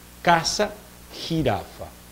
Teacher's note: tocando el paladar en la parte bien posterior